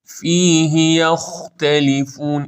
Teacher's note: ها فیهی کسره زیرش یه حرکت نه بیشتر